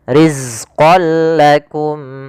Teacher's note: tanwinnya masukkan langsung kepada huruf lam dan tidak ditahan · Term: Idgham Bila Ghunnah